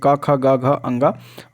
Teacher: का वर्ग का उच्चारण स्थान जो होता है वो कंठ होता है